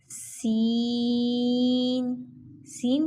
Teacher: हा हो दाल ज़ाल रो ज़ा इसमें सीटी होगी। सीन सीन के अंदर भी सीटी पाई जाएगी